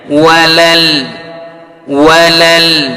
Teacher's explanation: lam memiliki sifat inhiraf, palingkan lidahnya. Walal, walal, jangan walal, walal.